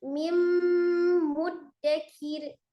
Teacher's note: Ditahan, ditekan suaranya masuk ke al-khaisum atau rongga hidung ya. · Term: dengung